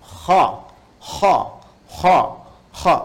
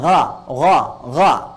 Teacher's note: itu bagian pangkal lidah di paling ujung itu menyentuh ke langit-langit. Sehingga ketika dia ke atas, suaranya lebih tebal. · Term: isti'la